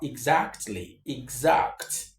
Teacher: most of the time not all the times you have the x being pronounced this x letter being pronounced as giz and not as x